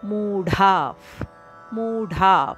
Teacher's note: ವಿಸರ್ಗದ ಉಚ್ಚಾರಣೆ ಫದ ಅಂತ ಕೇಳಿಸಬೇಕು ಬಾಯಿಂದ ನಿಶ್ವಾಸ ಮಾಡಿ ತುಟಿ ಮುಚ್ಚಿ